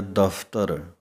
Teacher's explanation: ਉੱਪਰਲੇ ਦੰਦ ਜੇਕਰ ਥੱਲੜੇ ਬੁੱਲਾਂ ਦੇ ਨਾਲ ਲੱਗਦੇ ਹਨ ਤਾਂ ਪੱਫੇ ਦੇ ਪੈਰ ਦੇ ਵਿੱਚ ਬਿੰਦੀ ਦੀ ਆਵਾਜ਼ ਹੈ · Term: ਫਫੇ ਪੈਰ ਬਿੰਦੀ